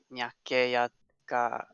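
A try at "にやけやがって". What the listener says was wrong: I think it's Nia, not Nya. やがれ。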